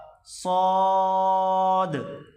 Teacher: سیٹی کی آواز نکال کر موٹا کر کے پڑھا جائے گا